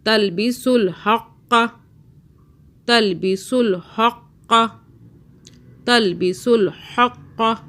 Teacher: ہا کو حلق سے قاف کو موٹا